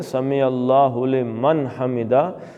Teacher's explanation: نون کا اظہار کر کے، کیونکہ آگے حمدہ ہا سے ہے